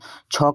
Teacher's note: छ का उच्चारण स्थान है तालु